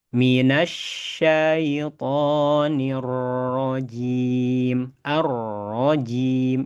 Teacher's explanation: huruf ro punya sifat namanya takrir, yakni adanya getaran ya. Dan getarannya tidak boleh terlalu banyak, cukup satu getaran saja. Setelah getar langsung tarik, yakni ada di bagian ujung lidah ya, huruf ro ya.